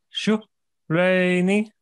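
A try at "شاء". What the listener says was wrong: No, it's a fatha. Shah.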